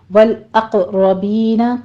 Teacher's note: والاقربین قوف کے اوپر قلقلہ ہوگا, قوف کو پر بھی پڑھنا ہے